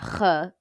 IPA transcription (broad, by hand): χ